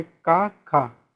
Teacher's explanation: जब का और खा बोलते हो तो कंपन नहीं होता है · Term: अघोष